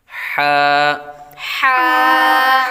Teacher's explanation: حلقے درمیان والے حصے سے ادا ہوتا ہے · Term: حروف حلقیہ